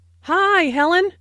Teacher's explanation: Notice that the I sound in hi is extended to show that is very pleased to see Helen.